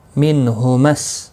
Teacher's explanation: نون ساکن کے بعد ہا آیا ہے، اظہار ہلکی ہوگا، غنہ نہیں کریں گے